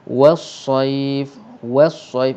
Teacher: waw tu nipis dan sad tu tebal. Jadi kalau kita tak hati-hati, kita mungkin akan tertebalkan waw.